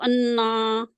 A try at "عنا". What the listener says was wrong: کے ساتھ آپ نون جوڑ رہے ہیں عین لائے